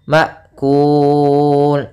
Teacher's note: masukkan finnya ke mim sambil ditahan gunahnya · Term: Idam